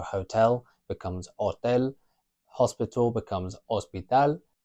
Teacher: If it's an actual Spanish word, the H is always silent.